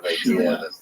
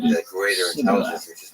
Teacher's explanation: In Gilead, people would pronounce this word with a sh sound on the front of it